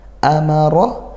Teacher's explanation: ro fathah tafkhim ya dibaca tebal